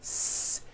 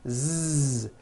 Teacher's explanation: So S has no voicing. S. Z has voicing. Z. So we say the S sound and the Z sound are also paired consonants.